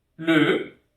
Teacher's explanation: Então vai ter esse som bem fechado, o som E, tá? Como na palavra le.